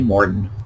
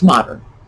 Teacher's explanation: people from northern massachusetts take rs out and throw them in